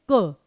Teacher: पीछे जीभ जो है पीछे लगी, प्रॉपरली गले में टच हुआ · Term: स्पर्श व्यंजन